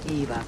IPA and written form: ˈeɪvɔːr (Eivor)